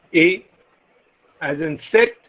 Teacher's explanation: front unrounded vowel just above half closed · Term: front half closed unrounded vowel